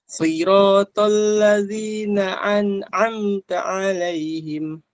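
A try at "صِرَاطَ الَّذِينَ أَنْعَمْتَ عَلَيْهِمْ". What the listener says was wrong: Ketika masuk ke ayat, Anda dengar masih hamzah kayak ain. Siratal ladzina an'amta. Ulang lagi.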